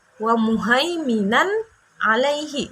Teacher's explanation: Jadi izhar ini dibacanya jelas dan tanpa berdengung. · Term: izhar halki